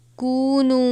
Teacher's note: نون واو پیش نو ہے، اس کو ایک الف کے برابر کھینچ کر پڑھیں گے